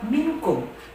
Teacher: Karena ada dua nun sukun bertemu dengan huruf ikhfa yaitu kaf. Maka nun sukun tersebut dibaca samar menyerupai pengucapannya atau seperti dengung.